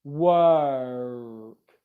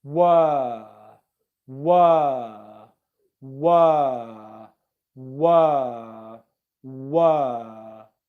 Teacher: you make the sound, but you don't move your lips to a different position as you're making it.